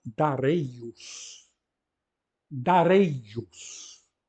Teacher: os gregos pronunciavam darios com o ditongo Ei que é longo por isso está acentuado